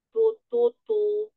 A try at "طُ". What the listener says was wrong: Tututu tebal. Lagi tipis lagi. Tipisin suaranya, lidahnya yang pangkalnya itu jangan sampai kerasa kena atas langit-langit. Relaxin lidahnya.